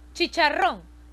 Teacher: la mayor fuerza de voz está en ron